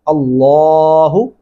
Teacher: اللہ کا نام موٹا پڑھیں گے اور اس کو لمبا بھی کریں گے لام کو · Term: لام موٹا